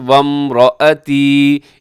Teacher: اسے رآتی آپ نے نہیں پڑھنا، حمزہ کو لمبا نہ کیجیے گا